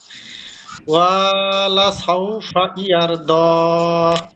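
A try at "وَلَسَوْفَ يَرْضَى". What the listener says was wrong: যে ওয়ালা সাউফা, ওয়ালা টান হয়ে গেছে, এখানে হরকত মনে হয়। আমি একবার বলে দিচ্ছি ওয়ালা সাউফা ইয়ারদা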